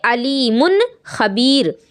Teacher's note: تنوین جو ہے اس کو آپ ظاہر کریں گے علیم خبیر، آواز ناک میں نہیں جائے گی